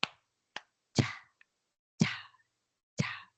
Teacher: Pero recuerdo mi época de preparación y una frada una africada es la combinación de estos dos dos momentos un momento de cerrazón y otro momento que escape el aire